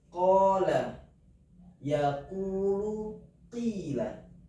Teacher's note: qola itu kita bacanya dua ketukan atau dua harakat